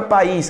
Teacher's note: A palavra país tem como a sílaba mais forte esse is.